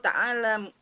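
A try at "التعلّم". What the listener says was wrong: Ta'allum. At-ta'allum ya. Bukan ta'allam. At-ta'allum.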